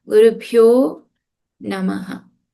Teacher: The Visarga changes into an O with a soft consonant.